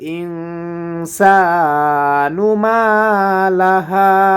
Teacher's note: ইং এখানে গুণনা করব নুন সাকিনের পরে সিন আসার কারণে।